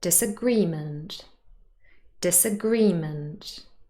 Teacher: this word is stressed on the third syllable · And if we add the prefix dis and the suffix ment, it doesn't change the stress. Disagreement, stress is on the third syllable.